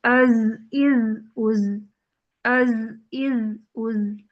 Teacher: زا جو ہے حروف مجہورہ میں سے ہے اور حروف رخاوہ میں سے ہے، سانس بند ہو جائے گی جبکہ آواز جاری رہے گی